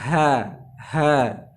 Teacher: tipis sehingga bukan wajah Hahaha bukan akan Tapi bacanya ha ha suaranya tidak naik ke langit-langit jadi tipis